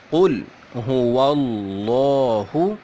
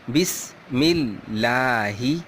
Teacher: لفظ اللہ سے پہلے زبر ہو یا پیش ہو تو لفظ اللہ موٹا کر کے پڑھیں گے، جیسے قل هو اللہ. اور اگر لفظ اللہ سے پہلے زیر ہو تو باریک پڑھیں گے